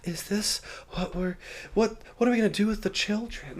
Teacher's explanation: She's so like breathy all the time. She's like, "Is this what we're what what are we going to do with the children?" Like like everything she says, it sounds like she's like out of breath basically.